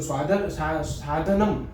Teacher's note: સાધનમ, ને આપણું હોઠ ચોંટી જાય છે. ઠીક છે? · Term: હલંત